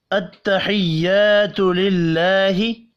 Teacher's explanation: التحیات الف مدہ ہے ایک الف کے برابر کھینچ کر پڑھیں گے ، تو للہ اللہ کا نام زیر کی وجہ سے باریک